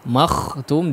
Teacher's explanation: Kemudian di kha-nya makhtum, makhtum diperjelas dan dipertebal lagi huruf kha-nya